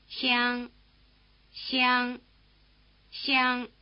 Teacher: It's not quite the same, of course. The tongue is held in a tight E position.